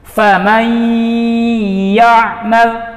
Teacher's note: Nun sukun dileburkan kepada huruf ya. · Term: idgham bi gunnah